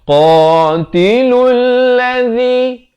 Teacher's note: Qa makhrajnya di pangkal lidah.